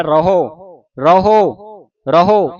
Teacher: ਪੂਰਾ ਮੂੰਹ ਖੋਲ੍ਹ ਕੇ ਉਚਾਰਨ ਹੋ ਰਿਹਾ